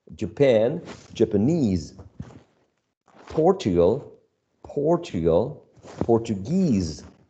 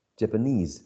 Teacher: Japanese is stressed on the last syllable